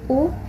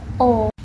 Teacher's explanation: vokal belakang Dimana posisi lidah berada di belakang